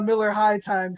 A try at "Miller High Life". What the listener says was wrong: High life. You said high time?